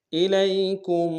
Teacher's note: کاف کو میم ساکن کے ساتھ ملانا ہے، غنہ کریں گے